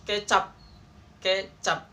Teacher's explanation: pengucapan fonem P itu tertutup